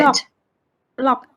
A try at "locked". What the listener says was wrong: Locked. Locked. Okay, because it says for the spelling, you have to pronounce as K and T together. T. So baked, ached, and locked.